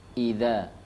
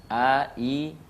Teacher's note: Surah ini diawali dengan huruf hamzah, idza, ya, a, i, ya, tempat keluarnya adalah pangkal tenggorokan, huruf hamzah